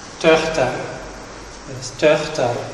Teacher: Son o redondado, parece ridículo, pero aquí é así. Son tensos, fican tensos, tens que notar unha tensión, labios tensos e arredondados.